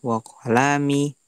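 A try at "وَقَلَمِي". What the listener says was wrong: Wa qalami, ini enggak panjang namanya. Wa qalami enggak. Wa qalami.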